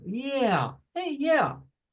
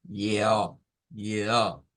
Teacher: En el inglés es como que cae, vea, es yeah, como yeah, hacia abajo